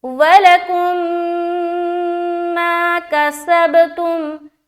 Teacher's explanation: میم کو میم سے ملا کر غنہ کے ساتھ پڑھیں گے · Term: ادغام شفوی